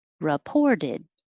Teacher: that re isn't stressed so it will most likely change to ra or ri reported and the t changes to a d 12 sits the